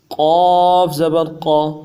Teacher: قاف کو بھی موٹا پڑھ کے پر پڑھ کے جماؤں کے ساتھ نکالیں گے اور ہر حال میں پر پڑھنا ہے قاف کو۔ قاف زبر قا، اس کو عموماً باریک پڑھا جاتا ہے کاف کے ساتھ، تربی کے ساتھ، جو سخت غلطی ہے اور اس حرف کی ناقدری ہے۔